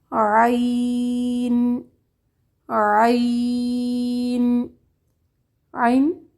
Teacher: وسط حلق سے ادا ہوتا ہے، درمیانہ حرف ہے، نہ باریک نہ پر۔ اس کی ادائیگی میں جھٹکا نہیں آنا چاہیے اور اس کی آواز کو پر نہیں ہونا چاہیے، جیسا کہ عا کی آواز نہیں آنی چاہیے، عا کی آواز آنی چاہیے، عا اس طرح۔